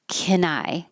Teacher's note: Can is usually not emphasized, so you won't hear the vowel a. It'll be shortened to just k.